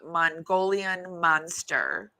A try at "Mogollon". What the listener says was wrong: Well, no, there's no N there.